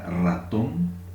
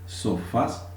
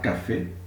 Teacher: recibe el acento en la última sílaba, termina en N, lleva tilde. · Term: palabras agudas